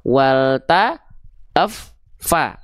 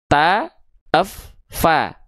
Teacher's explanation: yang pertama ada bunyi sukunnya dulu, yaitu ditekan dulu F-nya, baru keluar vokal A-nya yaitu fathahnya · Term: fa bertasydid